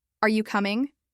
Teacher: If you raise your voice at the end of coming, it's clearly a question. It shows you don't know the answer and you're asking for one.